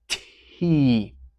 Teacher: remember to have that bit of air between your unvoiced consonant t, t, and your vowel, your voiced sound E. T. Nice and aspirated.